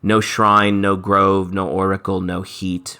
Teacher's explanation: Classic iambic pentameter lines, followed by short lines.